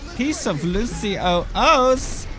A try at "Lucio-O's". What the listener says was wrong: He doesn't actually pronounce the S in Lucio O, so it's like Lucio O. So I think he's just telling you to have a singular O.